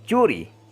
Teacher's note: el articulador es la región inmediata después de la punta de la lengua y el punto de articulación es la zona palatal también se puede notar que toca la región de el paladar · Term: consonantes para tales